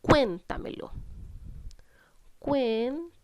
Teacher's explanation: se acentúa en la anterior a la antepenúltima sílaba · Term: palabra sobreesdrújula